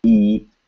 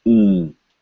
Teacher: And you are not saying an N sound, remember? So you are saying a nasal vowel sound. You are talking through your nose.